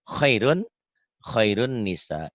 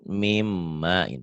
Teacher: nun mati atau tanwin ketemu nun dan mim idgham bigunnah. Diidghamkan, dimasukkan, dileburkan, disertai dengan dengung.